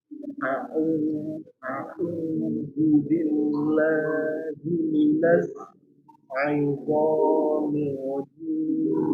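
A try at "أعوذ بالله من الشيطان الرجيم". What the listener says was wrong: Huruf shin di tengah tidak. Kalau itu mahrufnya huruf sa, itu suaranya huruf sa. Maka nanti salah.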